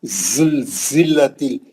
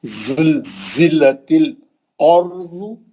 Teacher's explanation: یہ سیٹی والا ہے. زبان پیچھے رہیں گی، چھوٹا سوراخ رہیں گا، سیٹی ماریں گے.